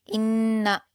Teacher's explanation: حمزہ کو نون سے ملا کر سختی کے ساتھ پڑھیں گے اور نون مشدد ہے تو غنہ بھی کیا جائے گا، اور یہاں پر خیال رکھنا ہے کہ ہم اس کو جلد پڑھیں گے۔